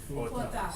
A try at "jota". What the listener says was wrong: Jota, like a H in front. This is sounds like an H in front. Jota. Okay, like in hot. And that's the letter J. No, we don't sound it. Yeah, it doesn't sound out because it gives like an H sound.